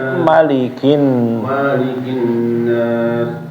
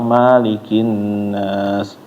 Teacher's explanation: Annas di ayat keduanya malikinas pendek beda sama di Fatihah ya. Fatihah itu panjang malikinas.